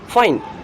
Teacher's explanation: Labiodental means lip, dental means your teeth. Lower lip will move against the upper front teeth, means lower lip is your active articulator and your upper front teeth are the passive articulators.